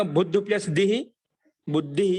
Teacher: అదేవిధంగా బుద్ధు ప్లస్ దిహి బుద్ధిహి. ఇక్కడ ధా, బుద్ధిలో ఉన్న ధాకి అల్పప్రాణం దా సామాన్య దకారం వస్తుంది · మనకి ఇక్కడ ధా అనేది నాలుగో అక్షరం పక్కన ఉంది. కాబట్టి అప్పుడు ఆ ముందున్నటువంటి మహాప్రాణానికి అల్పప్రాణం దకారం వచ్చింది, అంటే వర్గం యొక్క మూడో అక్షరం వచ్చింది